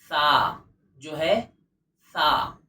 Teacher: زبان کی نوک اور اوپر اور نیچے کے دانتوں کا کنارہ مل کر سا ادا ہوگا، اور ہلکی سی ہوا باہر آئے گی